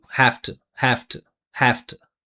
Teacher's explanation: We always pronounce it with F.